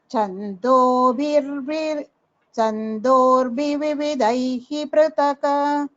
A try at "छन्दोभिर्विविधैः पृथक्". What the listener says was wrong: This Chandobhirvividhai Prithak, the Mahapranas should be clearer, Bhagini. Please practice well, especially the Mahapranas.